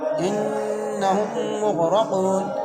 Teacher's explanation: دو میں وہ مد ہے۔ انہم مغرقون، آگے وقف، انہم مغرقون، ان کے نون پر غنہ ہوگا کیونکہ نون مشدت میں ہمیشہ غنہ ہوتا ہے · میم کو سختی اور جماؤ سے پڑھیں گے، میم مشدت ہے، مغ کے غین کو موٹا پڑھیں گے کیونکہ غین موٹا حروف میں سے ، را کو موٹا پڑھیں گے، را کے اوپر زبر ہے،